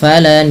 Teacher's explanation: menahan bunyi suara n atau bunyi suara nunnya sepanjang dua harakat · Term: gunah